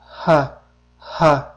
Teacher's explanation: Burun bo'shlig'i yopiq bo'ladi. Demak, tovush paychilari yaqinlashishi natijasida tirqish orqali havo tashqariga otilib chiqadi. Demak, nutq a'zolari erkin holatda bo'ladi. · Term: ha harfi